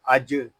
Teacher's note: جیم ساکن ہے اس میں قلقلہ خوب ظاہر کریں گے